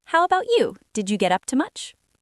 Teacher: Your voice needs to rise at the very end of the sentence on the word much. That rising pitch is the signal to the other person that it is officially their turn to speak.